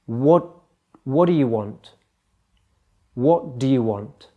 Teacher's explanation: the D and the Y get smudged together they become friends what do you what do you want the te is dropped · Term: linking words